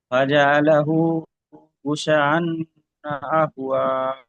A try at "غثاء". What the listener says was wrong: জি, এখানে মাদ আছে, একটু বেশি টান দেবেন, বাকি ঠিক আছে মাশাআল্লাহ।